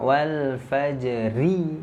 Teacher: Kalau dia huruf ro-nya kasroh berarti tipis. Nah, berarti kalau diwasol dia harus dibaca tipis.